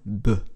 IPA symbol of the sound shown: b